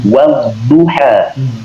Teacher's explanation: Jadi diawali dengan bibir yang mencucu dulu, baru berbunyi. Wadduha. Wa-nya mencucu dulu.